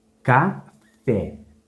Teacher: A sílaba mais forte é a última também, o fé. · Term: oxítona